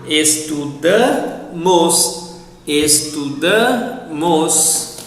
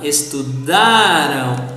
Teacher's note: the pronunciation of the verbs in the past for plural pronouns has the stress on the penultimate syllable